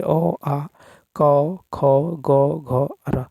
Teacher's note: कंठ जिन वर्णों का उच्चारण कंठ और जिह्वा के निचले भाग के स्पर्श से होता है